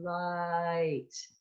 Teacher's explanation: Diphthongs, two vowels together. So like light, the word light has an ah and an e. Light. If you say it slowly, light.